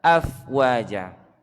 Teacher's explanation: fa itu keluarnya suara itu gigi atas menyentuh bibir bawah bagian dalam. Ya, kena bibir bawah bagian dalam itu.